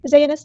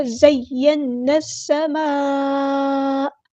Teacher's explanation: زینس نہیں پڑھنا، زین السماء. نون کو ہم نے سین کے ساتھ ملا دینا ہے. حمزۃ الوصل لمحہ ڈراپ ہو جائے گا.